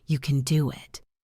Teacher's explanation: Listen to the stress on can and do.